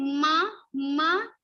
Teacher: when we say ma ma we have little vibration on our nose ma so this is called nasal constant because we are using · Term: nasal consonant